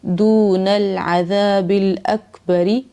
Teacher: ری کو کھینچنا نہیں ہے، اکبری، ری پڑھنا ہے، ری نہیں پڑھنا، را کو باریک رکھنا ہے